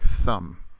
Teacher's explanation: it never makes the voiced th like in the or though it's always voiceless in other words there's there's nothing coming from your voice box